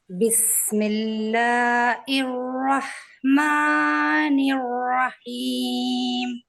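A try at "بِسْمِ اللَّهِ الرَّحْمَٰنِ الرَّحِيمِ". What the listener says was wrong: अच्छा एक मिनट, बिस्मिल्लाह, बिस्मिल्लाहिर, बिस्मिल्लाह, इर इर इर कहाँ पे है? हाँ है, हिर, हिर आप इर पढ़ रहे, हाँ आप इर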